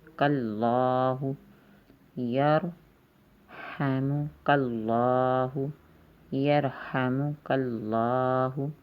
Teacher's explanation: اللہ کے لام سے پہلے کاف کے اوپر بھی زبر آ گئی ہے، اس لیے اللہ کا لام بھی موٹا ہو رہا ہے، گرین کلر اس کا ہے، یعنی کہ اس کو ہم بولڈ پڑھیں گے۔